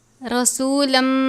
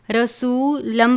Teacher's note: ارسلنا فیکم رسولم، تنوین کے بعد میم مشدد ہے، غنہ کرتے ہیں، تنوین کو میم مشدد سے ملا کر ادا کریں گے